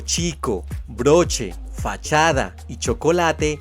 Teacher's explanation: La CH fue adoptada para representar el sonido africado postalveolar sordo